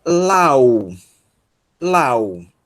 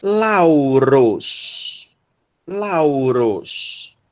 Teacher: Então, a sílaba tônica, aliás, o acento recai na segunda vogal, tá? Mostrando que a sílaba tônica dessa palavra é justamente a sílaba na qual aparece o ditongo.